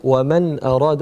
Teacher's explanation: وَمَنْ أَرَادَ وَمَنْ, donc noun sakin, suivi de al-hamza, on va dire وَمَنْ أَرَادَ, on ne va pas dire وَمَنْ أَرَادَ, il faut montrer distinctement un noun sakin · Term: al-idhar